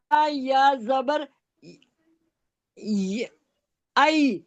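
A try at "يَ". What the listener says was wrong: آئی کیوں؟ آئی کیوں؟ حمزہ تھوڑی ہے. یا زبر یئی. یا.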